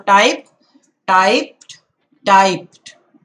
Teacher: Remember making the T sound instead of the D sound.